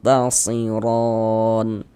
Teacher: cara membacanya disamarkan kemudian didengungkan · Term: ikhfa hakiki aqrab